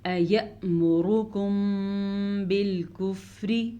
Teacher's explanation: اس کے علاوہ یہاں پہ میں نے غنہ کیا ہے دونوں ہونٹوں کو بند کر کے کیونکہ اخفاء شفی کا قاعدہ ہے۔